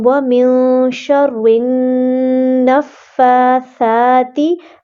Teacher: نون کے اوپر شد ہے، سو ہم یہاں پہ غنہ کریں گے